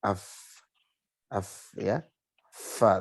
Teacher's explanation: Nafasnya mengalir. Jelas kalau fa itu nafasnya bunyi ya, bunyi nafasnya terdengar. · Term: hamas